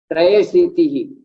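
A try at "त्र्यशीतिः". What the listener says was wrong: Trashitihi. Not Traya. It is Triya. Trashitihi. Triya. Trashitihi.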